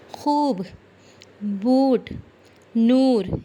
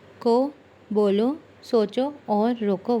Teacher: ایک میں واو کی پوری آواز آ رہی ہے اور ایک میں واو کی ہلکی سی بالکل معمولی سی آواز آتی ہے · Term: واو معروف